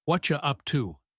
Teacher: The what and are and you blend together to make what you what you up to.